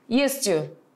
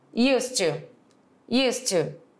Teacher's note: Você não vai falar esse S com som de Z. Ele já vai ter som de S.